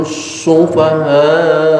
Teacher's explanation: Sufaha mad wajib mutasil, panjangnya 6 harokat